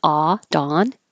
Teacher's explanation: So dawn. The lips are just straight up and down.